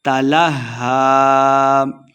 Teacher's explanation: غنہ کے پڑھیں گے، عَنْهُ تَلَهَّى ہا مشدد ہے، لام کو ہا کے ساتھ ملا کے پڑھنا ہے